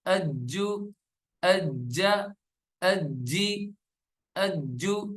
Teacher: جیم جو ہے وہ قلقلے والے حروف میں سے ہے تو جیم پہ قلقلہ کریں گے